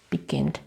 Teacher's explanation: consonant and attention begin becomes beginning look here begin one two the second syllable is a stress